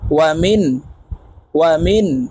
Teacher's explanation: দেখুন সাদ দাও, ওয়াও জবর ওয়া, মিম নুন জের মিন, নুন সাকিনের পরে ইজহারের হরফ খ আসছে, তাই এই নুনকে গুন্নাহ ছাড়া স্পষ্ট করিয়া পড়ব